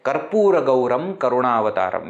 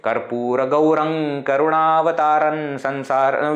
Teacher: Where it is remaining as Anusvara, you pronounce it as Ma. Because Ma is only becoming Anusvara.